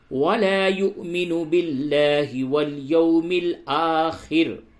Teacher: واو کے اوپر حمزہ ہے، یہاں پہ جھٹکے کے ساتھ بولیں